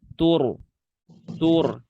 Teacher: Dan ada ro sukun sebelumnya dhammah. Ini juga tebal.